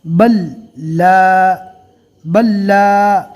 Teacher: یہاں پر جزم والے حرف کے بعد تشدید والا حرف ہے، لہٰذا جزم والے حرف کو چھوڑ دیں گے،